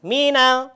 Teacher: Nah, hati-hati nih, kita menemukan alif lam qamariyah atau lam ta'rif, di mana lam ta'rif di sini atau alif lam qamariyah ini dibacanya jelas alif lamnya